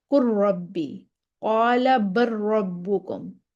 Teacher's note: لام کا را میں، قر ربی، قال بر ربکم، لام پڑھا ہی نہیں جائے گا، لام کا را میں مکمل ادغام ہو گیا